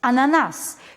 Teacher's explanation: Veja que a palavra ananás, a sílaba tônica dela é nas, portanto é a última sílaba tônica, sendo assim é uma aguda.